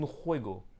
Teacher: Donc la rota, c'est un espèce de R à la française, mais plus profond dans la gorge. C'est très guttural. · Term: jota